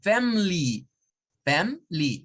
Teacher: a veces estas schwas se pueden omitir y puede ser que usted escuche a personas decirlas sin la schwa y decirlas como family, family, solo dos sílabas, family, family.